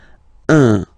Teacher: So it's what we call the nasal, so it goes in your nose, okay? So if you listen to me, you don't hear any N